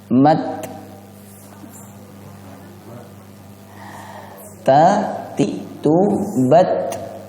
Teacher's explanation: Nah, itu tidak tepat karena seakan-akan setelah tak itu ada sin, dan ini bisa merubah makna. Nah, cara yang tepat pengucapannya itu adalah dengan menghembuskan napas tanpa ada bunyi desisan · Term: hams